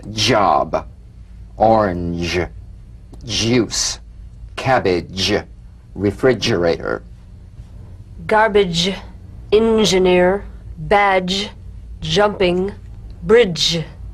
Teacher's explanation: a voiced percussive sensation flowing from the hard palate onto the gum ridge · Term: the j